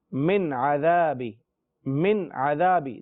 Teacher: نون ساکن ہونے کے باوجود بھی ناک میں آواز نہیں گونج رہی، کوئی غنہ کی کیفیت پیدا نہیں ہو رہی